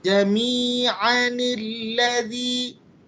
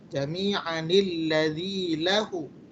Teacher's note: kalau dilanjutkan jami'anilladzi dia jadi pendek kemudian nunnya dikeluarkan. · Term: nun wasol